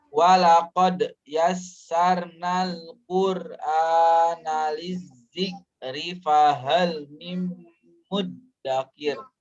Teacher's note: ada dal bersukun, dia qalqalah